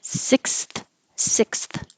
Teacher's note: lot of uh tongue movement from front to back to front your tongue is up for the S and back for the K up for the S and then even more forward for the th